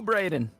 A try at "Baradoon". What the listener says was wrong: The U is in the spot. It's supposed to be pronounced Baradoon.